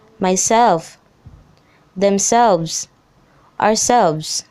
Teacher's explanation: the second syllable usually takes the stress